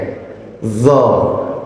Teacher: Dho-nya itu makhrajnya di ujung lidah ya.